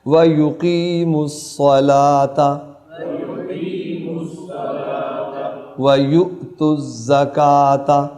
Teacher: یہاں قاف حلق سے آئے گا اور صلاح میں جو صاد ہے وہ بھی پر آئے گا